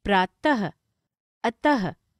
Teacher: विसर्ग, इनका उच्चारण ह वर्ण के समान होता है